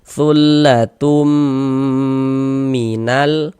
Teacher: Nah, kemudian dighunahkan. Jadi di bagian tumnya itu suaranya itu kita tahan, kita panjangkan sejenak sepanjang dua harakat. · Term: idgham bi gunnah